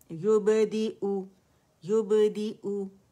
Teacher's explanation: یہ حمزہ قطع ہے، اپنے سے پہلی آواز کو ہمیشہ کاٹتا ہے، تو اس کو فار تھروٹ سے یہ ادا کرنا ہے ہم نے